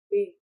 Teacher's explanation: Saat bibir bawah dan atas bertemu, menahan udara di rongga mulut, lalu diletupkan keluar. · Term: bunyi B